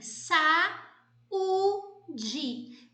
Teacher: saúde quando você divide você tem sa ú de veja que esse a e o u eles aparecem juntos na palavra mas eles são pronunciados em sílabas separadas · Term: iato